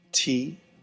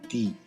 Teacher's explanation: It's similar to the English letter T, but with much less aspiration.